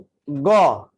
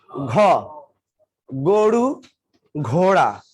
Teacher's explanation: যখন আমি উচ্চারণ করলাম খ, শ্বাসকে একটু বেশি লাগলো না? এরপরে বললাম গ, কম লাগছো। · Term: মহাপ্রাণ